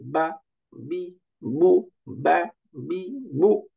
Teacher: শুধু হারাকা, কোনো টান হবে না, উচ্চারণটা হবে তাড়াতাড়ি